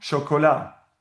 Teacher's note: the stress is on the last syllable, just like in French